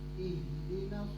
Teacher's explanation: H itu dia tebal tapi lembut. Ngalir dia.